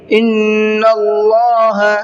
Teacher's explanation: اللہ کے لام کو منہ بھر کے پڑھنا ہے اس لیے کہ اللہ کے لام سے پہلے زبر ہے۔